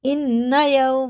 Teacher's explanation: واو ساکن سے پہلے زبر ہے تو جلدی پڑھیں گے، حرف لین ہے